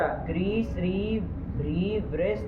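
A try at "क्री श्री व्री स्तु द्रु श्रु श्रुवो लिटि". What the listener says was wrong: वृष कहाँ तुम ले रहे हो? व्री के स्तु उधर जा रहा है ना।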